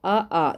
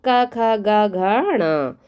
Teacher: ये सारे कंठ से बोलने वाले वर्ण हैं